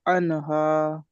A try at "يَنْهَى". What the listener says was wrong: আনহা নয়, ইয়ানহা, ইয়া আছে দেখেন, ইয়া নুন জাবার ইয়ান।